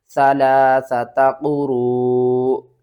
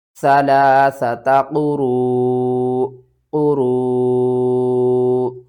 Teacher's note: جب بھی حمزہ ساکن ہوتی ہے تو اس کو جھٹکے کے ساتھ ہم پڑھتے ہیں